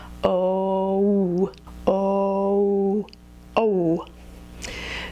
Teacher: Americans almost always use this diphthong so instead of using a pure vowel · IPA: o u